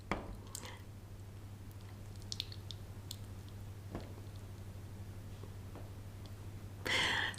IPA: ɪ